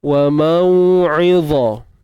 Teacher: Dha ni tebal dan keluar ujung lidah.